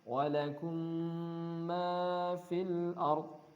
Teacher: Maka berhukum idgham mutamatsilain. Ya, dimasukkan ke mim setelahnya dan ada bacaan ghunnah, dengung ya